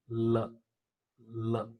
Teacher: the air is released from the side of the tongue, both the sides of the tongue, not the center of the tongue. · So it is described as L is a voiced alveolar lateral consonant sound.